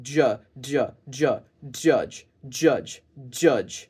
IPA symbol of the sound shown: dʒ